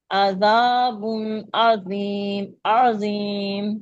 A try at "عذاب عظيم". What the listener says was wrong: हाँ जी, आइन की आवाज निकालनी है, हमजा की नहीं।